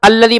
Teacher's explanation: اس کو الذي میں الف پہ زبر پڑھیں گے، یعنی اس کو حمزہ بنا دیں گے